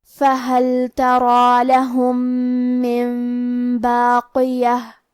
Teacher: من باقیہ۔ کلمت باقیہ پہ رکیں گے تو اس پہ ہا سے رکیں گے۔ فہل تری لہم من باقیہ۔